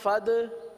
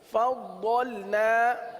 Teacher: ضاد کے اندر جماؤ کریں گے، صفت استطالت کی وجہ سے یہ اس طریقے سے ادا ہوتا ہے ، فضلنا تو دال بن گیا، اس طرح فد، یہ بھی